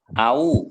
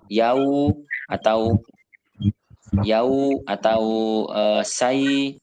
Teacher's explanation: wawu sukun atau ya sukun yang didahului dengan fathah itu bunyinya ai atau au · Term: huruf lin